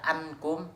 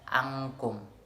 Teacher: nun mati tersebut bertemu dengan huruf kaf, yang artinya suaranya terdengar seperti ang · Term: Ikhfa